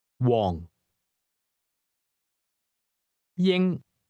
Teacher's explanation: Did you hear the high and lowlevel tones in that name?